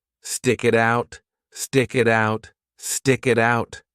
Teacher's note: the T in it is between two vowels so we connect those sounds together and pronounce the T like a soft D